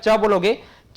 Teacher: तो तालव्य में देखें, जैसे आपका च बोलोगे तो आपका क्या है कि जीभ जो है ऊपरी जो है आपका दंत मूल के थोड़ा सा पीछे आपका आप उसको जीभ से टच करोगे